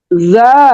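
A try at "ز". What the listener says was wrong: বলেন আবার, আর একটু শক্ত হবে।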